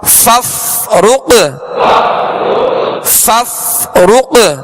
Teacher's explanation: فا کا جو مخرج ہے اس کے مخرج سے ادا کرنا ہے کہ اوپر کے سامنے والے دو دانتوں کے کنارے اور نچلے ہونٹ کا تر حصہ